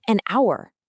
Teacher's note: That H is completely silent, so you're actually making an ow vowel sound right out of the gate.